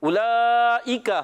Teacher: مد متصل کو 2 ڈھائی الف یعنی 4 یا 5 حرکات کھینچ کر پڑھتے ہیں، یہ آپ نے یاد رکھنا ہے۔ اولئک، حمزہ کو خوب واضح کریں گے، کاف کو باریک رکھنا ہے، کاف کا مخرج زبان کی جڑ اور تالو کا سخت حصہ، زبان کی جڑ اور تالو کا سخت حصہ۔